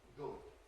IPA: ɡʊd